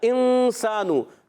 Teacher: اچھا، انسانو، نون ساکن بعد سین حرف اخفا میں سے، تو اخفا کریں گے، سین کو سیٹی کے ساتھ پڑھیں گے